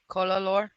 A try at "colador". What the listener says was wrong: Why doesn't anybody roll their R's? Why can't you guys just roll your goddamn R's?